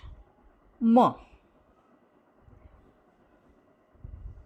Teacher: For the articulation of m sound, a closure is formed at the lips. The soft palate is lowered to allow a free passage of air through the nose. The vocal cords vibrate. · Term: bilabial nasal